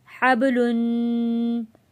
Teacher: बा पे हमने कलकला अदा किया है और तनवीन पर हमने गुन्ना अदा किया